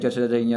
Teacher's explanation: च वर्ग यानी च छ ज ञ का तालु से होता है